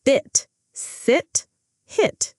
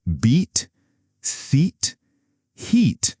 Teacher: Notice how you hold the vowel sound longer.